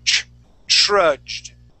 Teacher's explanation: it's gonna almost start off with a ch sound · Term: TR sound